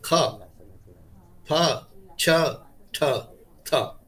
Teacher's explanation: Again, you get voiceless stops. Voiceless stop but aspirated.